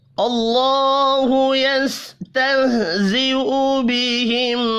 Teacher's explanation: अल्लाहु अल्लाह का नाम ज़बर की वजह से पुर पढ़ा जाएगा।